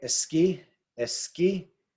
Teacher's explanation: The stress is on the last syllable there.